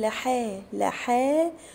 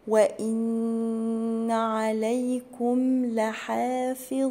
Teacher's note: لحافظين، هنا ما اقولش لحا، لا اقول لحا لحا، وبعد حرف الحاء في الف كده صغيرة، دي تعتبر مد طبيعي بمده حركتين. لحافظين، والفاء والظاء مكسورين، اكسرهم كويس.